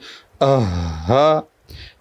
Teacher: حلق کے نیچے والے حصے سے آواز آنی چاہیے